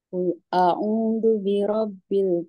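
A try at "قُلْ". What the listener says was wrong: Kul mengalir, lamnya mengalir. Nah, kul a'u tapi tidak boleh ditarik.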